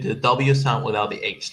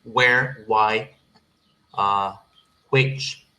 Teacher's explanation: It has to sound like who, but most people they just do the W sound without the H